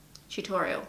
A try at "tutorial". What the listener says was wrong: No, no. It's not a CH, it's a T.